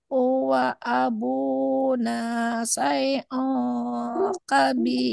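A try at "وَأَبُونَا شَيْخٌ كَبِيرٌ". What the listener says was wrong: Syaikhun ada nya huruf kho. Syaikhun kabir.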